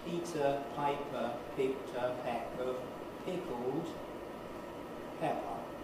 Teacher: when I close my lips for each P and turn my voice off, the waveform stops briefly